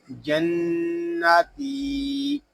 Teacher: یہاں تا کو ہم ایک الف تک کھینچ کر پڑھیں گے کیونکہ یہاں یا مدہ ہو رہا ہے